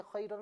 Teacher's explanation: خا کا مخرج حلق کا اوپری حصہ ہے، ابھی آپ کو بتایا گیا تھا، تو اس اعتبار سے کہ اس کا تعلق بھی حلق سے ہے اسے حرف حلقی کہیں گے، اور اس بنا پر اسے پر پڑھا جائے گا کہ اس کا تعلق حروف مستعلیہ سے ہے۔